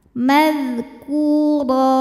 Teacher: Huruf ra dibaca secara tafkhim karena berharokat tanwin fathah. Cara membacanya adalah ditebalkan. Ra pangkal lidah naik. Kemudian apabila berhenti ra karena barisnya tanwin fathah, maka hukumnya adalah mad iwad sebab ada harokat tanwin fathah yang kita wakofkan atau kita berhentikan. · Ku hukum tajwidnya adalah mad tabi'i zahiri sebab ada waw sukun sebelumnya berharokat dhammah. Cara bacanya dipanjangkan kafnya 2 harokat. Madhkura. Huruf ra dibaca secara tafkhim karena berharokat tanwin fathah.